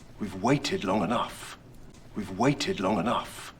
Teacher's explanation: So quite clearly he stresses the waited and the enough.